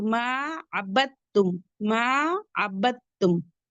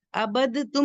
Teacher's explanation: अब ये अब तुम में आपको इदगाम के कायदे पढ़ाए गए इगाम मुतखबैन मुतजानिसैन मुतजालिस तो ये करब मखरज है ता दाल ता का मखरज सेम है तो ये दाल कहां चली जाएगी हट जाएगी और डायरेक्ट बा को ता से मिलाएंगे दाल को बिल्कुल भी नहीं पढ़ेंगे · ڈائریکٹ با کو تا سے ملائیں گے، دال کو بالکل بھی نہیں پڑھیں گے